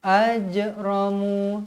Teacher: jim pun huruf qalqalah. Jadi wajib dibaca melantun. Ajramu, mu berhenti dengan kadar 2 harakat.